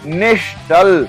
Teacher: इसमें नी के बाद विसर्ग है और उसके बाद च आया हुआ है और अपना नियम कहता है यदि च या छ विसर्ग के बाद आता है तो उसका श शहामृग वाला बन जाता है और शब्द बनता है निश्चल। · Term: विसर्ग संधि